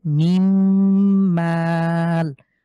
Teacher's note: ইয়া, তাহলে এখানে নুন সাকিনের পরে মিম হয়েছে, আমরা মিলিয়ে পড়ছি। এই নুন সাকিনকে বাদ দিয়ে সরাসরি মিম এসে মিমকে ধরবে। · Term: ইদগামের গুন্না